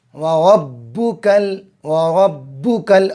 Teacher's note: را پر زبر ہے، را کو موٹی آواز میں پڑھو۔